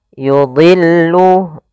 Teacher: Pada lafal yudhillu, dha di sini huruf isti'la termasuk huruf tafkhim, maka dia tetap ditebalkan, bukan yudillu tapi yudillu.